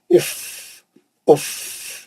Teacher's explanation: खाली नीचे के होंठ पे दांत रख के पीछे से हवा मारना बस। इफ उफ, आवाज नहीं, उफ जोर का आवाज ही नहीं आना, खाली हवा का थोड़ा आवाज आना।